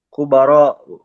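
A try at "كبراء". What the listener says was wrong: Kubaro'u ujungnya ada hamzah. Kubaro'u hamzah. Ini ciri jamak taksir pola fu'ala'u. Wazan fu'ala'u. Ujungnya harus ada alif dan hamzah.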